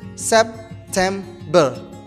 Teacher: September. There are three syllables. September. The stress is in the second syllable.